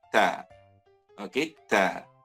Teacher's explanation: Huruf ta ini berada pada hujung lidah. Okey, dan sedikit menyentuh bahagian gusi gigi atas.